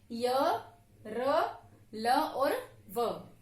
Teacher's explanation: जिन ध्वनियों का उच्चारण स्वर और व्यंजन के बीच का होता है, मध्य का होता है, उन्हें हम कहते हैं अंतस्थ व्यंजन।